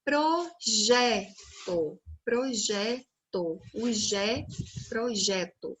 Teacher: o Zé com J né é a sílaba tônica